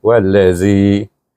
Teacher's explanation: Kalau dia berhenti, kita baca dengan dua harakat saja.